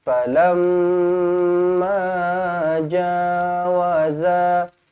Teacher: Ja dua harokat. Kemudian za pun dua harokat juga. Sebab apa? Ada huruf mat selepasnya.